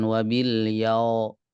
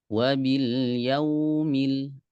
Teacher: Hati-hati di huruf wawu sukun, dia punya sifat liniyah ya. Wabil yaumil, bukan wabil yau, bukan o tapi u.